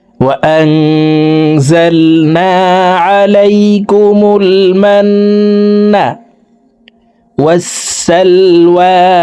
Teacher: এই নুন সাকিনকে নাকের ভিতরে লুকাইয়া গুন্নার সহিত পড়ব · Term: ইকফা গুন্না